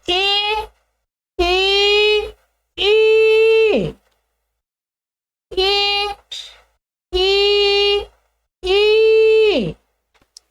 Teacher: ऐसा मत सोचिएगा ये छोटी ई है, छोटी नहीं है, ये 3 गुनी है।